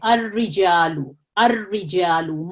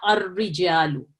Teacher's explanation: منہ کو آپ نے گول نہیں کرنا اور رو نہیں بولنا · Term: ترقیق